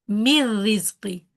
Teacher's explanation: Noon sound is merged, noon, ghunna, all the characteristics are merged. So it's a complete merging.